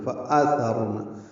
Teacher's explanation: ثا نرمی سے پڑھنا ہے، را سے ملانا ہے